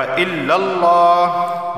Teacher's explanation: لفظ اللہ سے پہلے زبر آیا ہے تو لفظ اللہ کو موٹا پڑھا جائے گا